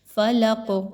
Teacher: قاف پر جب آخر میں جزم کا نشان لگائیں گے اور وقف کریں گے، آواز اور سانس کو توڑیں گے، تو یہاں پر قلقلہ کریں گے، یعنی قاف کو ہلا کے پڑھا جائے گا۔